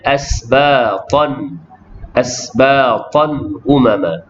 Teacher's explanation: Kemudian asbatan umama, tanwin bertemu dengan hamzah, idhar halki jelas bacaan tanwin